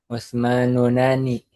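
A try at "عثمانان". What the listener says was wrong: Usmana nih. Difathahkan dulu. Ujungnya difathahkan dulu. Usmana nih. Baru tambah alif nun.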